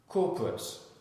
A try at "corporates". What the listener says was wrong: Because you want to add syllable.